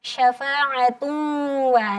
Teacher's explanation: Jadi bacanya yang benar adalah syafa'atun wa. Naik bunyinya ke hidung. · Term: idgham ma'a gunnah